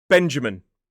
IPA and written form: ˈbendʒəmɪn (Benjamin)